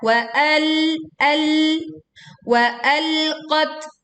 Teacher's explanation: tak sukun kita baca dengan mengalirkan angin